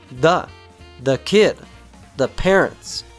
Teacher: both occurrences of the in this utterance are unstressed. They sound like a weak syllable.